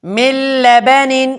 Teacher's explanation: اسی طرح من لبن، یہاں پر نون ساکن ہے اور نون ساکن کے بعد لام آیا ہوا ہے اور لام حروف لر میں سے ہیں، یعنی یرملون میں پھر جو لر ہیں وہ ہیں، لہذا یہاں پر ادغام تو ہوگا لیکن غنہ نہیں ہوگا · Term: ادغام بلا غنہ